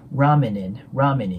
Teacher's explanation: ラーメン、N▁で終わって次、in▁っていうのが母音なので、子音足す母音でね